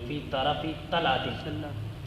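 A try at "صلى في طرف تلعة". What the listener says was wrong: صلی، چھوڑ رہے ہیں لفظ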